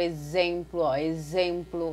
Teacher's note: é um som de Z que nós escutamos, mas nós vamos escrever com X